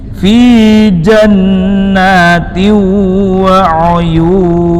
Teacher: Apabila nun sukun dan atau tanwin bertemu dengan salah satu huruf yang empat, ya, nun, mim, waw, maka bunyi n pada nun dan atau tanwin itu dilebur, dimasukkan, diidghamkan, namun bil gunnah dengan memakai dengung. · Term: idgham bil gunnah